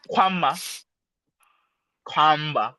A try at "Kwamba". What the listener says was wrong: So you're not pronouncing it with your with the back of your mouth. You pronounce it with your tongue, right? Put your tongue on the furthermost tip, right here by your two front teeth,